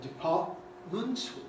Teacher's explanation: with the glottal stop which is certainly the most usual pronunciation in this word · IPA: [-ˡpɑːʔ-]